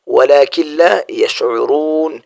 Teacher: یہاں نون ساکن کے بعد لام آیا ہوا ہے، یہاں بالکل بھی غنہ نہیں ہوتا۔